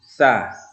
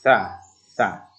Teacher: cara mengucapkannya ini adalah ujung lidah kita di antara dua gigi. Kemudian kita tarik sa, berbunyi desis sa. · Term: huruf sa